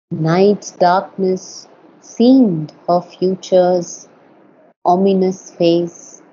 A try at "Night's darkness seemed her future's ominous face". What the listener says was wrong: very often uh you you accent a word that does not need to be accented.